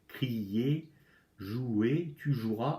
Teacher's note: Ah, on n'entend plus le E.